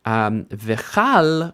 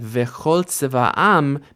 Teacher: Even though this is a word that can stand by itself, it's not standing by itself here, so it's technically an unstressed syllable in this larger unit of pronunciation. So instead of v'chal, we get v'chol tzeva'am, because chol is actually unstressed. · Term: kamatz katan